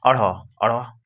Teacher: उच्छिप्त वर्ण है। अब देखिए, अढ़ मूर्धन्य है, जो कि मूर्धा से बोले जाते हैं, मूर्धा में टच होता है